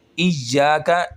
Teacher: ایاک اس کو ہم ایک الف کے برابر کھینچیں گے اور یا کو سختی کے ساتھ پڑھیں گے